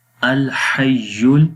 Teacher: ہا کی آواز کلیئر، یا کے ساتھ اس کو ملائیں گے